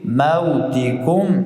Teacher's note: میم ساکن بعد از آمده اینجا اظهار شفوی میشه یعنی بدون زیادت نقصان میم را نطق میگیم